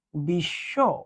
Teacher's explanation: মাঝে বা শেষে যদি ব ফলা থাকে সেটা উচ্চারিত হবে না যার সঙ্গে থাকবে দুইবার